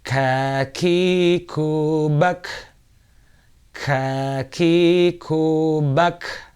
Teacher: Kaf lebih depan sedikit dan lebih ringan membacanya, tetapi dia termasuk khamas, maka ada hembusan nafas atau aliran udara yang keluar dari tenggorokan.